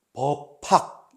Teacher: 비읍도 바람 소리를 내면은 거센 소리가 되니까, 예사 소리에서 거센 소리가 되니까 피읍으로 발음이 나는 거죠